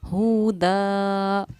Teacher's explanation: دو زبر پر جب ہم وقف کرتے ہیں تو ایک زبر کے ساتھ الف پڑھا جاتا ہے